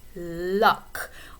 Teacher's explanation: Sometimes people might refer to the L at the beginning of the word as a clear L, luck, whereas the L at the end of a word like apple or people might be called a dark L.